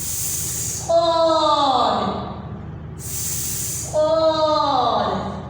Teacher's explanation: اس کو ادا کرنا ہے سیٹی کی آواز کے ساتھ زور سے، جیسے ہم نے زا اور سین کو پڑھا ہے.